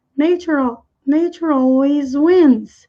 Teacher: ao pronunciar esse E, acaba emendando lá com a vogal